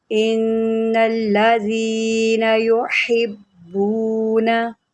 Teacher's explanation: बा को 2 मरतबा पढ़ेंगे, एक हम पीछे मिलाकर पढ़ेंगे हा के साथ, फिर इसको हम उसकी हरकत के मुताबिक पढ़ेंगे क्योंकि बा के ऊपर तशदीद है।